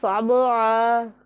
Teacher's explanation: با حرف قلقلہ میں سے ہے تو اسے ہم نے تھوڑا سا جھٹکے کے ساتھ پڑھنا ہے